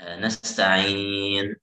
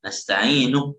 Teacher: Kalau waqaf baru ada sukun nun, ya kan? Kalau nggak waqaf kan nggak ada sukun. Nasta'inu, ya kan? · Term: sukun arid